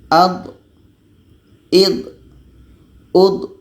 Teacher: huruf d ini letaknya pada salah satu tepi lidah atau keduanya bertemu dengan gigi geraham atas jadi hati-hati ketika sebut D ini jangan sampai ada hamasnya atau